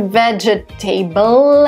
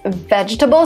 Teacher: So the second E is not pronounced and the last E is not pronounced.